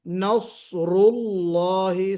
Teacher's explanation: سواد کوشش کرنا ہے کہ سیٹی بھی بجے اور موٹا بھی پڑھا جائے۔ نصر اللہ، صفیر کی وجہ سے سیٹی بجے گی، اور استعلاء اور اطباق کی وجہ سے اس میں موٹا پن آئے گا۔